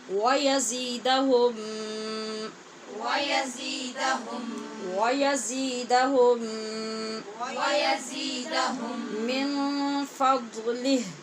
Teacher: میم کا میم میں ادغام ہو رہا ہے، اس کو ادغام شفوی کہتے ہیں۔ یہاں میم ہے یزیدہم کا میم اور اس کے بعد من کا میم، تو پہلے میم کا دوسرے میں ادغام ہو رہا ہے، اس لیے غنہ ہوگا۔